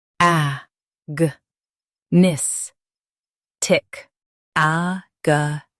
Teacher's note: Stress in nis and keep ga soft.